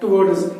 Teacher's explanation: ड के बाद जब एस आता है, एस को मिलाया जाता है तो वो ज साउंड देता है